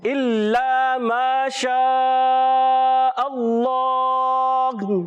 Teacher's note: حرف مدہ ہے، ایک الف کھینچ کر پڑھیں گے، اور شاہ پر مد ہے.